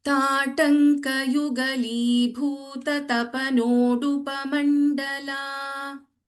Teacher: don't stretch the nodupa too much also, and da is an alpa prana.